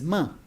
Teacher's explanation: Ma uses the lips, and it's nasal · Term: labial nasal